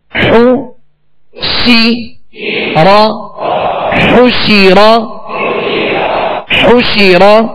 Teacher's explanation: کیبارو، حا پیش حو، سین زیر سی، حوشی، را زبر را، حشیرا، حو شی را، حو. حا پر پیش ہے، اس کی ادائیگی میں ہونٹوں کو کامل گول کریں گے. شین کے نیچے زیر ہے، آواز کو گھرا کر، اور زبر را پر ہے تو آواز اور منہ دونوں کھول کر اس کو ادا کریں.